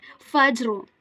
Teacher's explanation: It's not fajr. We need to perform khalkhala at jim. We have to bounce it back and then read rest of it.